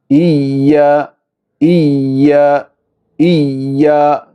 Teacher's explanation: യാഇൻ്റെ മഖ്റജ്, നാവിൻ്റെ മധ്യവും അതിനോട് നേരിടുന്ന മേലണ്ണാക്കും. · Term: ഷദ്ദുള്ള യാ